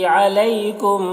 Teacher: یالین سے نرم آواز کے ساتھ جلد پڑھیں گے